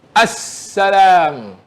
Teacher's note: Ditulis alif lam sin, tetapi apabila disebut alif lam tu tak jelas.